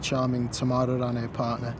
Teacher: you've actually added an extra R to join those two words together to give it a good flowing link